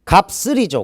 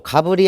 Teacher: 시옷이 연음 현상이 일어나는데 시옷은 된소리로 발음한다.